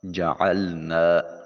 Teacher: عین کو وسط حلق سے نکالیے۔ نا الف خالی از حرکت، ما قبل مفتوح، الف مدہ ہے، منہ کھلا کر کے ادا کریں گے، آواز ناک میں نہیں جانی چاہیے اور اس کو ایک الف کے قائم مقام لمبا کیا جائے گا۔